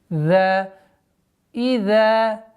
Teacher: Ударение в размере двух огласовок. Межзубное произношение звука заль.